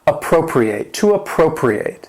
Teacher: That stress is still on the second syllable, but the fourth syllable has that long A sound.